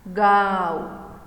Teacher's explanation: नाक और मुंह दोनों में से एक साथ आवाज निकलती है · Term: चंद्रबिंदु